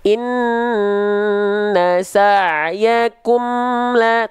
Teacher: Izhar syafawi dilafalkan dengan cara mengizharkan mim sukun dari syafawi, menjelaskan mim sukun dari bibir.